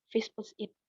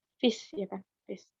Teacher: visit itu mempunyai dua suku kata, vis plus it. Tapi stresnya itu berada di awal suku katanya